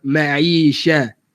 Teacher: Sya daripada tengah lidah. Jangan guna huruf shin daripada hujung lidah. Ma'i sya. Ke belakang sikit.